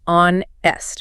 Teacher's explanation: But the h is silent. You pronounce it onest which is an o vowel sound.